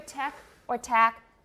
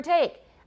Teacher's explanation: the second element of the diphthong in taiwan is often dropped you monophthongize diphthongs so instead of saying take in taiwan you often hear attack